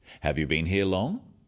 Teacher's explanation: questions that start with have you are yes/no questions so they have a rising tone